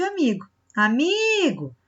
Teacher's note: vai ser a penúltima sílaba mais forte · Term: paroxítonas